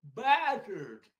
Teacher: Тешка тут без придыхания идет.